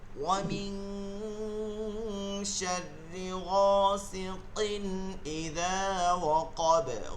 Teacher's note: তানবিনের পরবর্তী হরফ হচ্ছে হামজা, হামজা আইন হা ওয়াইন কা, ইজারের হরফ গুন্না ছাড়া স্পষ্ট করিয়া পড়তে হয়